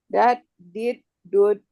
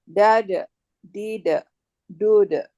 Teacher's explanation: Ada qol-qolahnya, ada pantulannya.